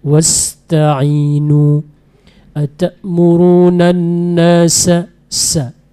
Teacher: Kemudian huruf sin gitu juga nanti diperbaiki ya. Sin diperbanyak lagi anginnya. Wasta'inu atamuruna nasa sa benar-benar banyak anginnya ya.